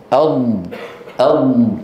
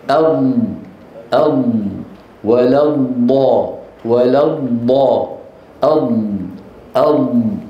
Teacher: تغلق فاذا اغلقت الصوت صار محصورا هنا خلف اللسان ويضغط فاذا تحت تاثير الهواء الضاغط يندفع اللسان الى الامام مليمترات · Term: الاستطاله